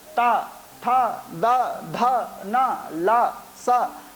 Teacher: जैसे कि दंत स्थानीय जो वर्ण हैं, आप बोल करके देखें, लरी, हमें दांत, अपनी जिह्वा को दांतों में स्पर्श करना पड़ता है